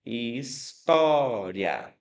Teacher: O i nesse caso tem um som levemente mais fraco, é semivogal. · O som subiu, né? O som aumentou de intensidade, saiu do mais fraco e foi para o mais forte. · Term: ditongo crescente